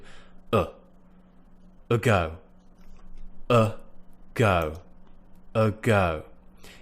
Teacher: position the schwa sound is what we call a lazy sound the tongue is actually just sitting in the middle of the mouth not at the bottom not at the top it's just there you might have to slide it back just